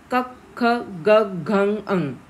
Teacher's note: क ख ग घ अंग, त्यांचं जे उच्चारण स्थान आहे ते काय आहे तर कंठ आहे. त्याला इंग्लिशमध्ये आपण थ्रोट म्हणतो किंवा गट्युरल्स.